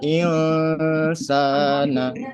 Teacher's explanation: Dibacanya samar, nggak dengung juga ya tidak jelas juga. Makanya dibaca ilsana.